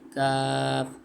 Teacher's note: کوے کے قریبی لیکن ذرا منہ کی طرف ہٹ کر